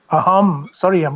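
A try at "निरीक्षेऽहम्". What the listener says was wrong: no, it's not aham. It's hum. If you say aham, it becomes ego, ahankar. It will change the meaning.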